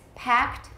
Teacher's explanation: it's voiceless we add a t sound no extra syllable